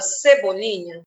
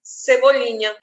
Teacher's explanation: Na palavra cebolinha, o que eu pronuncio com mais força, com mais ênfase? Cebolinha, é o li. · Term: sílaba tônica